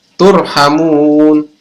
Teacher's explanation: Maka ini adalah mad arid lid sukun, dibaca panjang 2-6 harokat